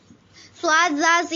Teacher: صاد، زا، سین حروف صفیریہ زبان کی نوک اور دونوں دانتوں کے اندرونی کنارے سے ادا ہوتے ہیں